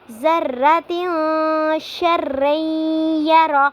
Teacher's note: تنوین کے بعد حروف اخفا میں سے شین آ رہا ہے تو یہاں پہ ہم اخفا کریں گے، آواز کو ظاہر کر کے نہیں پڑھیں گے، آواز کو ناک میں تھوڑی دیر کے لیے چھپائیں گے